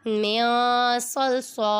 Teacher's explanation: نون پر اخفا ہو رہا ہے کیونکہ نون ساکن کے بعد حروف اخفا میں سے صاد آ رہا ہے، ادھر غنہ کریں گے